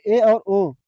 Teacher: अर्ध संवृत्ति में मुंह आधा बंद रहता है।